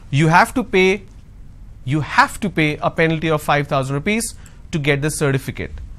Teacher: Now here I'm going to stress on have. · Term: sentence stress